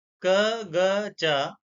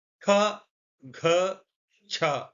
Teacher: वास्तविक धारणा, यह केवल फेफड़ों से निकलने वाली हवा की मात्रा का अंतर है। अल्प प्राण कम हवा क ग च, महाप्राण अधिक हवा हा जैसी ध्वनि का जुड़ाव ख घ छ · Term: अल्प प्राण और महाप्राण